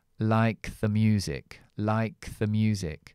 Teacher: Pero yo cojo la k porque es una consonante explosiva al final de la palabra y lo uno a esta th que está unida a esta palabra music